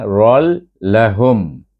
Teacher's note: Idgham bila gunnah, tanpa dengung. Cuma idramkan ra kepada huruf lam, tukar ra baris 2 kepada ra baris 1, bunyinya rol.